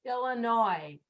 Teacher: pero en realidad no suena la S porque es una palabra de origen francés